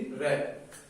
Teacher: व्यंजन है जिसमें कंपन पैदा होती है, प्रकंपित पैदा होती है, तो वो हमारा व्यंजन है रे।